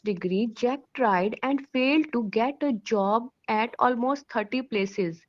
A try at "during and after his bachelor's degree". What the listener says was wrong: So when you read this sentence during and after his bachelor's degree, so please try not to pronounce each and every word of the sentence. Some words are reduced in speech. That is what we call as stress in a sentence. So we put stress on the important words and we reduce the sounds of the less important words.